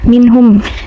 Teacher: Nah, minhum ini tajwidnya izhar halki, nun sukun bertemu ha, dibacanya jelas tanpa dengung